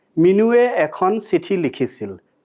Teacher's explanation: the word Minu ends at a back rounded vowel sound, so it takes the way form.